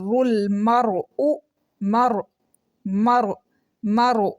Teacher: را بولڈ ہو رہی ہے، منہ بھر کے پڑھی جا رہی ہے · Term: موٹا